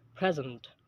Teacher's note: there is stress on the first syllable in the word present when it's a noun and a stress on the second syllable in the same word